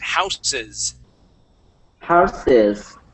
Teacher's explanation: the word houses with an S sound as sounding as a Z at the end